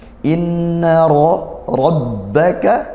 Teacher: Kali ini di ayat yang ke-14, inna rabbaka, inna ada nun bertasydid, kita baca dengung gunnah seperti itu ya, didengungkan inna rabbaka. Kemudian ra-nya berharakat fathah, maka kita baca tafkhim ditebalkan